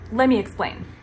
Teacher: Let me is pronounced as lemmy, lemmy.